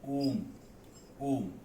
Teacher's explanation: इसका अर्थ है कि आ की तुलना में हम जब ओम का उच्चारण करेंगे तो ये तिगुना समय लेगा, तो इसे हम प्लुत कहेंगे।